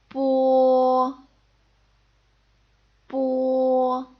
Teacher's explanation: in both cases I'm not blowing air out